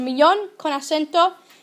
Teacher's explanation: millón needs an accent because the stress is on the last syllable